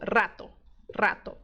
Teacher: movimento da língua é a língua ela faz essa onda e a ponta da língua bate no céu da boca então o r é praticamente a língua fazendo isso muito rápido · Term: R vibrante